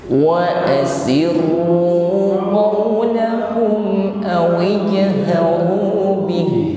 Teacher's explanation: Ya, tidak terasa sifat huruf ha-nya, ya, karena diakhiri dengan huruf ha, maka kita sampaikan sifatnya atau makhrajnya pada huruf ha. Bih terasa di tenggorokan paling bawah. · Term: makhrajnya huruf ha